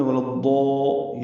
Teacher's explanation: ولا یہ بھی ولا ضا نہیں پڑھنا، زال نہیں پڑھنا، ضا نہیں پڑھنا. ضاد پر ہے، حروف مستعلیہ میں سے ہے، اور یہ الف مدہ ہے، اس کا الف مدہ بھی پر ہے. ولا ضا یہ مد بنے گی وہ میں آپ کو بتاتا ہوں، لیکن یہ پر پڑھنا ہے.